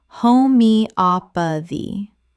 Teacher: The stress falls on the third syllable. Op. Five syllables in total.